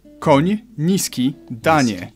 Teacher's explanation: You start with an N and soften it to ni.